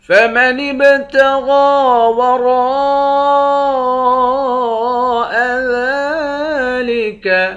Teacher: نون کو با کے ساتھ ملا کر با پر قلقلہ کریں گے، با حروف قلقلہ میں سے ہے۔ غین اور را دونوں کو موٹا پڑھیں گے، غین کے اوپر کھڑا زبر ہے، کھڑے زبر کو ایک الف کی مقدار کھینچ کر پڑھتے ہیں۔